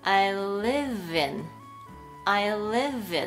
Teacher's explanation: ですから▁V▁で音が終わっています。ですから▁live▁in▁というふうに▁V▁と▁I▁がつながってしまう。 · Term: 連結